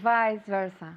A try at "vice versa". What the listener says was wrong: Vice versa with a good V sound, not vice versa. No, vice versa. Very good.